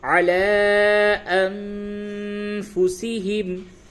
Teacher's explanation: لام کے اوپر مد ہے تو اس کو تھوڑا سا کھینچیں گے، اور نون کے بعد فا ہے، یہاں پہ اخفا ہوگا